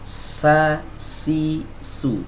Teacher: Ya, salah satu perbedaannya huruf sin, ya, memiliki sifat hams, ya, atau mengalir udara, ya, berhembus udaranya atau nafasnya